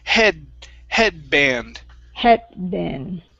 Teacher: we do not finish the d we don't want to say d okay we don't want to drop the tongue we want to keep the tongue at the